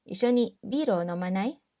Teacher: Syllable み becomes ま、飲まない。Then, we said it with a rising intonation to change it into a question